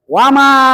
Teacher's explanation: Ah, mim tuh ada baris patah. Di atas mim ada lagi bendera kan. Maka membacanya harus lebih dari dua harakat.